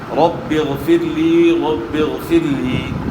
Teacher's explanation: را ساکن سے پہلے زیر را کو یہاں باریک ادا کرنا ہے